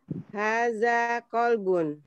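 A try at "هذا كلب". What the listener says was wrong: Bukan kolbun, kalau kol itu pakai kok. Ini pakai ka.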